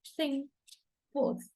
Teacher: articulation is interdentals. By putting the tongue between the teeth.